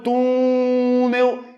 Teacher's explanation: porque ela não demora mais tempo na sílaba na última sílaba demora mais tempo na penúltima sílaba · olha o túnel, eu demoro mais tempo onde? No tu. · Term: paroxítona, Paroxítona